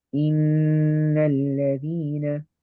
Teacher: we're going to do a ghunna of 2 harakat. We're going to do the nasal sound for 2 harakat, 2 counts. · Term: noon mushaddada